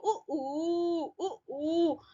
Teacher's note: यस, तो ऊ दीर्घ समृद्ध मतलब पूरा बंद मुंह रहेगा। और होठ यहाँ पर ऊ बोलने से क्या हो रहा है? गोल हो रहा है। · सभी बच्चे देख लो, ऊ, तो वृत्त बन रहा है, गोल हो रहा है, तो इसलिए वृत्तामुखी है। मुंह मुख जो है गोल हो रहा है, तो इसलिए वृत्तामुखी बोला जाएगा। वृत्तामुखी, व्रत मतलब गोल, मुखी मतलब मुख, तो वृत्तामुखी इसका हो गया शब्द।